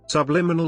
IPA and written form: sʌbˈlɪmɪnəl (Subliminal)